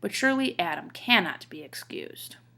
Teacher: but is unstressed sure is stressed Lee is unstressed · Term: iambic pentameter